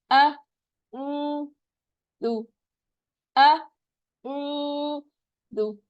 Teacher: हमजा झटके से शुरू कीजिए, खींचना नहीं है।